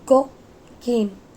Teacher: Let's talk about g sound. G sound is a voiced velar plosive sound.